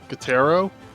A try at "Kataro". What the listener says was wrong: No, you pronounce the O as a U for some reason.